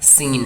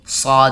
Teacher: سین اور صاد یہ دونوں قریب ایک ہی مخرج سے نکلتے ہیں، لیکن آواز میں تھوڑا سا فرق ہوتا ہے. سین کی آواز پتلی ہوتی ہے اور صاد کی آواز موٹی ہوتی ہے، کیونکہ صاد حروف مستعلیہ میں سے ہے.